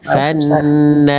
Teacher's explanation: Nah-nya tipis dulu. Nah, yang tebalnya ro-nya aja